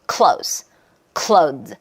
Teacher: clothes 약간 모음이 길어지는 느낌이 있죠